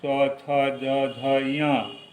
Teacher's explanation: जैसे कवर्ग, क, ख, ग, घ, अंग, इनका उच्चारण स्थान है कंठ, इसे कंठ कहा जाता है। चवर्ग, जिसे तालु से बोला जाता है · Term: तालव्य